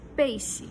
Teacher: o peixe a gente chama de bilabial, quando gruda um lábio no outro e faz pressão